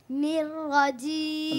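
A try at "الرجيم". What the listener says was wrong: রটা ছুটে যাচ্ছে। নির্রাজিম নির্রাজিম নির্রাজিম।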